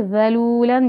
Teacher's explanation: ज़ाल का मखरज ज़बान थोड़ी सी बाहर निकलेगी